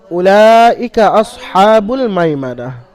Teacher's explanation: উলা এখানে কিন্তু উ হবে না মানে টান হবে না